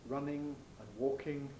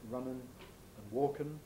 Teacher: In non-received pronunciation, that is, in working class pronunciation that's considered incorrect, vulgar pronunciation, you get an alveolar nasal for the ing ending. So instead of running and walking, you get runnin' and walkin'.